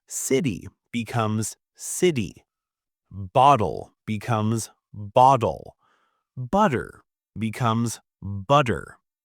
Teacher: As you can hear, the T sound often converts to a D.